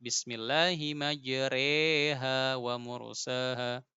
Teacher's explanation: imalah mereng yang dicondongkan kepada kasrah